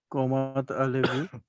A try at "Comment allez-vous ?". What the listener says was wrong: Comment allez-vous? अच्छा, ये कोमा नहीं, कमो कमो. हाँ, comment allez-vous? अब बेसिकली होता है क्या है, इसमें वॉविल है ए फ्रेंच में.